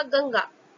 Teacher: यहाँ पर अनुस्वार यानी अंग की बिंदी के चिन्ह के प्रयोग के बाद क वर्ग का वर्ण ग है, अतः यहाँ अनुस्वार का चिन्ह अंग की बिंदी अंग यानी क वर्ग के पंचम वर्ण का उच्चारण कर रहा है